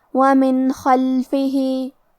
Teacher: خاء حروف الاظہار میں سے ہے اور اظہار کا معنی ہے ظاہر کرنا تو ہم یہ نون ساکن کو ظاہر کریں گے اور بغیر غنہ سے یہ حکم کو ادا کریں گے · وَمِن خَلْفِهِ. کلمت خلفہ خاء کی ادائیگی حلق کے اوپر والی حصے سے ہے اور حرف الخاء حروف تفخیم میں سے ہے تو ہمیں یہ حرف کو موٹی آواز میں پڑھنا ہے. آخری میں ہاں کے نیچے کھڑی زیر ہے.